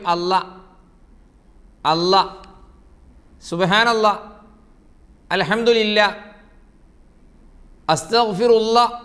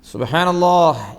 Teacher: ആ ഹ ഇല്ല കുറേ ആളുകൾക്ക്, കുറേ പേർക്ക് ആ ഹ ഉച്ചാരണത്തിലേ വരില്ല. എന്നിട്ട് അവർ പറയും അല്ല അല്ല, സുബ്ഹാനല്ലാ, അൽഹംദുലില്ലാ, അസ്തഗ്ഫിറുല്ലാ.